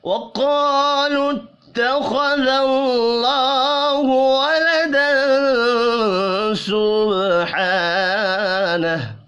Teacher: تنوین کے بعد سین ہے, اخفاء حقیقی ہوگا